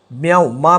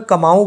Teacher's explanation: यह अंतस्थ व्यंजन लगा हुआ है साथ में तो म्याऊ म्याऊ मा में बहुत कम समय लग रहा है मतलब आधे व्यंजन के बराबर समय लग रहा है